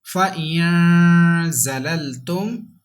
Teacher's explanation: Next word, without spelling, but with ikfa, because za is ikfa letter and za has come after noon sakin. That's why we have to read with gunna.